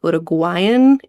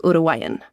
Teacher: you don't really pronounce the G in the middle so much